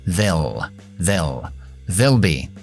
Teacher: Esa L se llama la L oscura. Tienes que subir más la lengua arriba y tocar más partes del paladar que la L normal que viene delante de las vocales. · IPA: /ðeəɫ bi:/